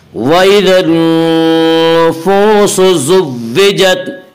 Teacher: نون مشدد غنہ ہوگا، غنہ کی مقدار ایک الف ہے۔ وَإِذَا النُّفُوسُ، واو مدہ وہ واو جو ساکن ہو اس سے پہلے پیش ہو، واو مدہ کو ایک الف کے برابر کھینچ کر پڑھیں گے۔